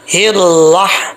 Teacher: ہا clear sound ہے، اس کا تعلق حلق سے ہے، سینے سے نہیں ہے. حلق سے ہے اس لیے اس کو بریک پڑھیں گے.